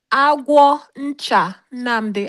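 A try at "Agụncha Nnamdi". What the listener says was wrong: It's not agwo. It's not. There's no O in it. There's no agwo. It's not agwo. There's no O in it.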